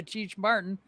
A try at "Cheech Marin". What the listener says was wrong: said Cheech Marin. There's no T. No, Marin. There's no